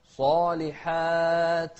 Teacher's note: الصاد مفخمة والحاء بعدها ألف كلها أيضا مرققة.